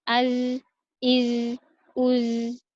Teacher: Huruf za ini dia terdengar ada desisnya, ada suara desisnya.